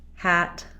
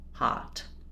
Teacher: The back of the tongue is lifted versus /ɑ/, the whole tongue is down.